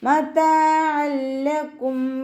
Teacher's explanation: തെൻവീനിന് ശേഷം ഇദ്ആം ബിലാഉന്നയുടെ അക്ഷരമായിട്ടുള്ള ലാമ് വന്നു. തെൻവീനിനെ ലാമിലേക്ക് ലയിപ്പിക്കുന്നുണ്ട്, പക്ഷേ ഉന്ന കൊടുക്കാതെ ഓതി കൊടുക്കുക